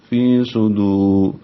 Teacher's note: فی یا مدہ ہے، 2 حرکات لمبا کریں گے